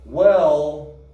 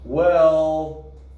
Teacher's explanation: she drags this out with a long vowel sound